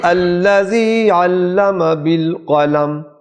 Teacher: قلم کا قاف حلق سے آئے گا